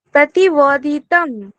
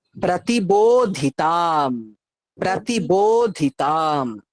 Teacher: দেখো, প্রতি বলে থামলে হবে না, থামলেই বোঝা যাবে বোধ হয় তুমি তয়ে দীর্ঘ ইকার বলছো, ফলে প্রতি বলে থামা যাবে না। বো ওকার আছে, টানতে হবে। আর প্রতি- তম ওটা নেই, তাম আছে, আকারকে টানতে হবে।